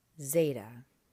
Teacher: I think you could hear me give that Z sound a little bit more of a D behind it, like the Z in gadzooks.